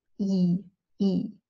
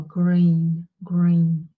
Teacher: it's a static sound, it's a flat sound, it's a tense sound, E, E, as opposed to the sound as in English, eagle or green, green.